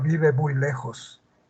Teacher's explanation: En las oraciones afirmativas, el tonema, la inflexión tonal, es descendente. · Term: tonema descendente